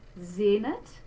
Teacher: there is our Z sound and our closed E